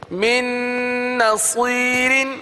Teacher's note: اگلا کلمہ میم نون نون زیر من، من نون زبر ن، من صاد یا زیر صی، من نصی، را دو زیر رن، من نصیر، دیکھیے گنہ کریں گے نون پر، اور من کا جو نون ہے وہ دوسری نون میں مل جائے گا، مدغم ہو جائے گا